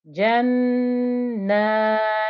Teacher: So just like if we'd had a mim with a shadda here before, when we had mim with a shadda on this word, here we've got noon with a shadda on this word, both mim shadda, noon shadda. You need to hear that غنة, that nasal humming noise.